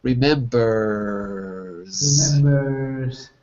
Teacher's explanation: You hear Z. Because remember, your vocal cords are moving. Put your fingers on your throat and feel.